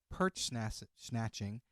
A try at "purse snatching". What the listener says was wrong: Perch snatching? I think you said perch, not purse.